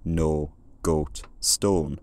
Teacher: English speakers colonised a lot of Ireland, bringing with them these monophthongal pronunciations